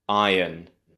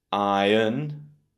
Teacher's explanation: this is British English, so we don't really have an R sound at all. In the American version, you do have an R sound, but it's important to remember it's not in the first syllable.